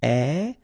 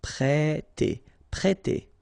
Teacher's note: We've got here this accent circumflex on the top of E, so if you remember carefully, it will produce the sound E, so really open